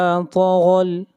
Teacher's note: ता और गौइन ये दोनों हरूफ मुस्तालिया में से हैं, इन दोनों को मोटा पढ़ा जाएगा।